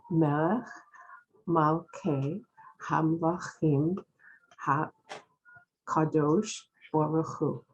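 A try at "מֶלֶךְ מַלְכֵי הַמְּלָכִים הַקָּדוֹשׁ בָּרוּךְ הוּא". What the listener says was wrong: Lovely.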